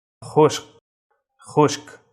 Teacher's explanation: খর নিচে ফুটা থাকাতে এর উচ্চারণটা খার মতো হবে, আরবি খা গলা থেকে আসবে। এবং রস্যকার খ, রস্যকার খু, তালব্যস্য সংযুক্ত ক, খুশক।